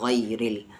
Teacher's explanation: आगे गैन भी यहाँ पर हेवी लेटर्स में है, गई, और रा को यहाँ पर लाइट पढ़ेंगे क्योंकि रा पर ज़ेर है, ज़बर नहीं है,